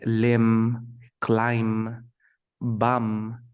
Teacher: when you have this pattern MB, you never pronounce the B.